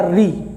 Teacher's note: री करने से आपकी जो जीभ है वो आगे के भाग को छू रही है, इसलिए ये अग्र स्वर है